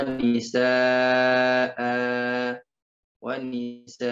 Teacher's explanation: ini dibaca dua harokat mad iwad